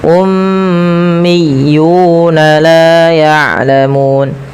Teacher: Umunam lafal miyuna ditekan huruf ya berharakat tasydidnya. Ummiyuna laun yulamu ini harus tahan dan juga kita panjangkan dia dua harakat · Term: mad thabi'i